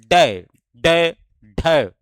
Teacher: इसको यहां पर देखिए अथवा ताडन जात वर्ण भी इसको व्यंजन भी इसको बोला जाता है क्योंकि यह जीभ के मूर्धा पर मारने से उत्पन्न होता है। जीभ हमारी मूर्धा पर झटके से स्पर्श करती है। तो इसलिए इसको ताडन जात व्यंजन भी कहा जाता है। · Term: उत्क्षिप्त व्यंजन, उच्छिप्त व्यंजन